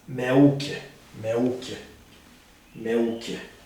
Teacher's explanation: emphasis is given in the middle syllable